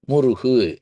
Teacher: இந்த முருகுன்ிற சொல்லலயே ஒரு மெல்லினம் ஒரு இடையினம் ஒரு வல்லினம் இருக்கு அது மகரம் மெல்லினம் மு ரகரம் இடையினம் ரு ககரம் வல்லினம் கு